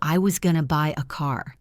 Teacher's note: I was becomes almost a whisper. Going to becomes gonna. Buy and car are the strong beats.